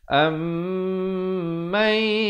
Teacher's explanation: Ammai, di sini nun mati bertemu ya idgham bi gunnah, masuk beserta dengung 2 harakat juga